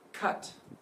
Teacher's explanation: a stressed version of the schwa